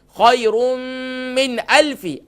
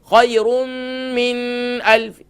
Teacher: یہاں اظہار ہوگا, یہاں نون ساکن کو ظاہر کر کے پڑھیں گے